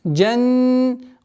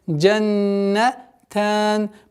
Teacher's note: Удержание назализации над буквой нун в размере 2 огласовок.